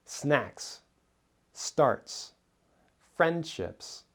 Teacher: words that end with a voiceless S sound because the S comes after a voiceless sound